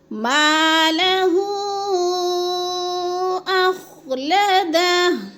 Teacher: حروف مدہ کے بعد حمزہ دوسرے کلمے میں آ گیا ہے تو مد منفصل، 4 الفی مد ہے، اس کو 4 الف کے برابر ہم نے لمبا کر کے پڑھنا ہے۔ · اب اخلدہ نہیں پڑھنا، وقف کی صورت میں ہا کو ساکن کر کے پڑھنا ہے